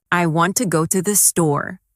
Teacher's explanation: The stresses on want and store. The words to and the are much softer. This creates the rhythm of English.